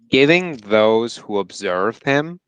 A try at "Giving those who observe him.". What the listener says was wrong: Perfect. That was excellent.